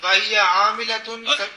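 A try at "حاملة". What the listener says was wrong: عاملہ نہیں حاملۃ حاملۃ سبیین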